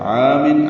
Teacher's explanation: عامن عین کو 2 حرکات لمبا کریں گے